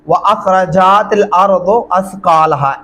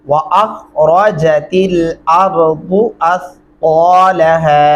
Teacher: व अखरजा, जीम को लंबा नहीं करना। तेल नहीं पढ़ना, इसको तिल पढ़ेंगे। अर्दो नहीं पढ़ना, अर्दू पढ़ेंगे।